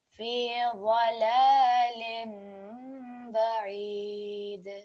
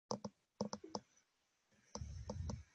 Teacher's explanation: This lam over here was read a little bit thick, so you want the wad over here to be thick, but the lam should be thin